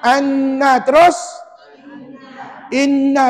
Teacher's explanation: huruf mim dengan Nun tu dibunyikan betul-betul dalam rongga rongga hidung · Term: bunyi sengau